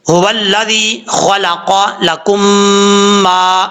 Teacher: हुवल्लज़ी खलक़ लकुम मा, यहाँ पर हा भारी साउंड के साथ पढ़ा जाएगा क्योंकि जिस मखरज से अदा होता है, जिस हल्क से अदा होता है हा, उस हल्क का ताल्लुक सीने की तरफ है, इसलिए इसको भारी साउंड के साथ पढ़ेंगे।